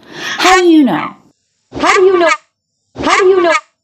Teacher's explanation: that with a hand gesture how do how do you know a little bit of stress on a question word that's really typical to have the question word be stressed